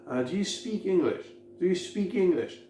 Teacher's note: J'accentue speak et English. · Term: accent tonique